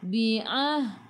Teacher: daripada kerongkong, bukan daripada hidung